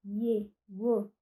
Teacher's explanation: não apresentam obstrução nenhuma, mas também não ocupam o núcleo da sílaba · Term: semivogais ou semiconsoantes